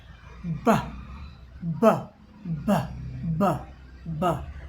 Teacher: तो यहाँ कंपन हो रहा है, यहाँ झंझनाहट हो रही है। ब गूंज भी सुनाई पड़ रही है। और ब इसमें झटका कोई हवा का नहीं है